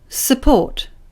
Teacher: support the stress syllable is the second one bort the first one is unstressed so the vowel sound becomes